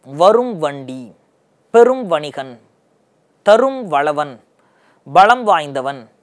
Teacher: இம்முன்ற எழுத்து அரை மாத்திரையிலிருந்து குறைஞ்சு 1/4 மாத்திரையாக ஒலிக்குது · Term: மகர குறுக்கம்